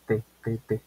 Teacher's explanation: La T sale como debajo de los dientes superiores.